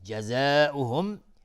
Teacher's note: مد واجب متصل به مقدار 4 تا 5 حرکت وجوبا مد بخواد